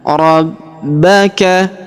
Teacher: Huruf ba kita tahan dan tekan karena terdapat tanda tasydid di atasnya.